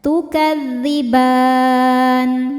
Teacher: Mad thabi'inya fathah panjang pada huruf ba, huruf yang disukunkan nya huruf nun. Maka ba nya panjang, boleh dua atau empat atau enam harakat asal konsisten dalam sekali baca. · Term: mad arid lisukun